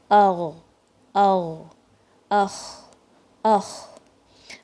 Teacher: ادنی الحلق، جو پارٹ منہ سے زیادہ قریب ہوتا ہے، جو سب سے بگننگ آف دا تھروٹ جو ہوتا ہے. اور ادھر سے ساؤنڈز آتی ہیں غین اور خا کی.